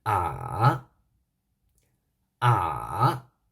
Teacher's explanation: The third tone falls and rises.